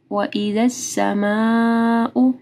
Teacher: مد ہے، اس کے بعد حمزہ ہے، تو 4 سے 5 حرکات کے برابر اس کو لمبا کرنا ہے